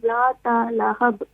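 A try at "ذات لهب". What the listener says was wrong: جی ذات نہیں کہ اس کو تا کو نہیں کھینچیں, ذات لہب.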